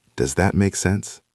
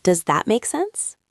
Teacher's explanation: Notice the intonation goes up at the end.